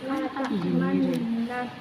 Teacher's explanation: mencampurkan doma pada sukun dengan memoncongkan bibir atau mengangkat 2 bibir.